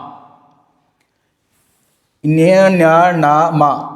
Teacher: ಮೂಗಿನ ನೆರವಿನಿಂದ ಅಥವಾ ಮೂಗಿನ ಸಹಾಯದಿಂದ ಉಚ್ಚರಿಸಲ್ಪಡುವ ಅಕ್ಷರಗಳನ್ನು ಅನುನಾಸಿಕ ಅಕ್ಷರಗಳು ಅಂತ ಹೇಳಿ ಕರೀತೀವಿ